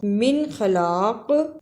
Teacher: من خلاق اظہار اور قاف پہ قلقلہ کرنا